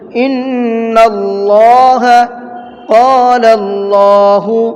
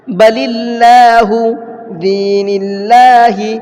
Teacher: لفظ اللہ سے پہلے زبر یا پیش ہو تو لفظ اللہ کے لام کو پر کر کے پڑھیں گے، یعنی کہ منہ بھر کے پڑھیں گے